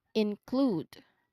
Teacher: Again, include with a long oo sound. Feel that smooth KL blend starting the second part of the word